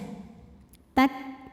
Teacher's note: Huruf kaf ini dari segi suara, suaranya kuat ya, tertahan syiddah. Tak, makin ditekan ke makhrajnya, makin tidak keluar.